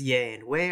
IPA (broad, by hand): je and we